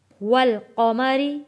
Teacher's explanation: قاف کو موٹا پڑھیں گے، قا، میم کے اوپر بھی زبر ہے، ما۔